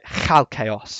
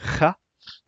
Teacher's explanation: It's most described as K and H, but the way you pronounce it is a bit like loch in Scots. It is that sort of at the back of the throat kind of ch sound.